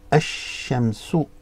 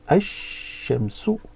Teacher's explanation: Ash, so here, the sheen, the lam again is silent